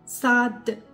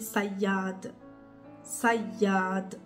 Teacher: Le Sad, vous allez remarquer que la langue, quand vous dites Sad, ça va venir toucher un peu le palais mou. C'est-à-dire, elle va venir toucher pas la partie de palais qui est juste après les dents, mais celle qui est profonde.